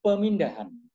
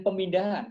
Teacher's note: Kalau pemindahan itu imbuhannya penasalan. Di sana ada nasal. Nasal itu bunyi sengau. Kebetulan bunyi sengaunya muncul M.